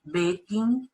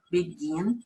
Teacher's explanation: Então, podemos observar nesta tabela o verbo begin, e observe que a gente não fala begin, a gente fala begin, então a sílaba tônica está no final